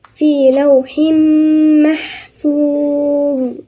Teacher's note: تنوين بالكسر وبعديها الميم يبقى في غنة